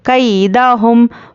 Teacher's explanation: तो अभी यहाँ पर ना तो मीम है और ना ही बा है, इसलिए यहाँ पे इजहार शफवी का क़ायदा आता है तो हम यहाँ पर मीम को ज़ाहिर करके पढ़ेंगे